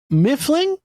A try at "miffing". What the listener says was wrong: There's no L in there.